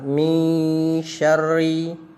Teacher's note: huruf nun mati ketemu shin, ya, dibaca ikhfa atau samar-samar